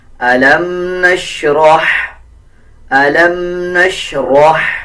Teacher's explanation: را کو پر پڑھیں گے اور ہا کو باریک پڑھیں گے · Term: باریک ہا